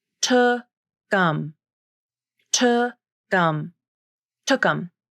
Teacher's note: it's almost like the final K in took moves over to the beginning of the next word